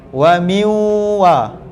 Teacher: Nak sebut waw tu pula, mulut jangan wow, jangan muncung, sebab dia berbaris atas. Wa miwa, tarik balik mulut ke belakang.